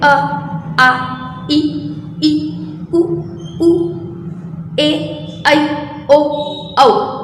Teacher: सारे वर्ण हमारे कंठ से निकल जाते हैं और कहीं कोई रुकावट ही नहीं आती है। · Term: स्वर वर्ण